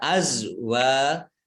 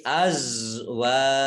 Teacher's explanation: Za sukun itu bukan kolkolah, makanya tidak dipantulkan.